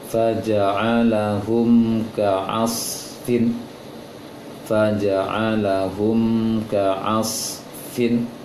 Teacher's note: Terdapatnya tanda sukun pada mim dan setelahnya adalah huruf kaf sebagai pertanda bahwasanya mim sukun tersebut tidak dengung.